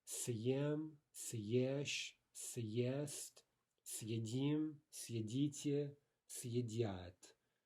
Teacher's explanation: To say first a hard S, then follow that with a soft vowel.